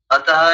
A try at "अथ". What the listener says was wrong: अथः नहीं, अथ, बस अथ बोलना है।